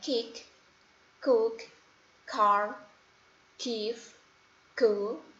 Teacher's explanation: lidah bagian belakang yang bertemu dengan bagian belakang langit-langit